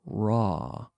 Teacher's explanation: we don't roll the R like you do in Spanish